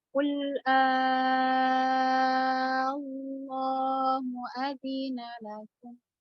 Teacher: Cara bacanya untuk mat farqi, panjangkan dulu 6 harokat hamzahnya, baru ditasydid ke lambang lam Allah, ke huruf lam Allah.